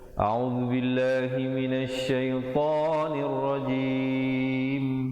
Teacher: A'u, bukan a'u ataupun a'u, ya, yang betulnya a'u. Kemudian zu di hujung lidah, bil dibacakan dengan nipis